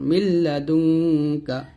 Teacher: তো মিমকে লামকে ধরবে, মিম লাম যে মিল লাম যে বললা, মিল্লা দাল নুন পেশি দুং কাফ জবর কা, মিল্লা দুং কা, এখানে নুন সেখানের পর কাফ আসছে, ইকফা গুণনা এখানে গুণনা হবে, মিল্লা দুং দুং এখানে গুণনা করো, মিল্লা দুং কা।